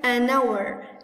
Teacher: ال h كانت silent ما بلفظها، فبدأت بصوت الفوول.